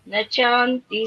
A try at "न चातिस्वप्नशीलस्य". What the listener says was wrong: शान्ति शान्ति नास्ति एकवारं न चातिस् स्वप्न अत्र द्वित्वं भवति न चातिस्